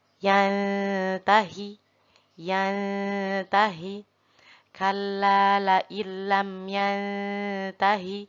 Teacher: nun berharokat sukun bertemu dengan huruf ta, yaitu huruf ikhfa. Maka harus dibaca samar nun tersebut.